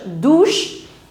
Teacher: The pronunciation of the combination CH in English is ch. But in French it's sh. So together it becomes douche.